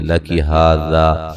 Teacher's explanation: ہا مد اصلی ہے، ذا الف مدہ ہے، دونوں کو سیم لمبا کرنا ہے